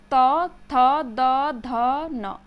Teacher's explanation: हमारी जीभवा जो है वो दांत से आकर के टच हो रही है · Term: दंत्य